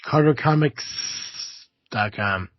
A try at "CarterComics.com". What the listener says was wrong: I'm glad you clarified that, because I did feel like the way that you pronounced S just now sounded a bit like an F. Yeah, well, like COMICF is what it almost sounded like, because you put so much emphasis on it.